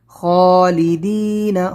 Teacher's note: خا کو لمبا کریں گے، دال یا زیر دی کو، نون کو نہیں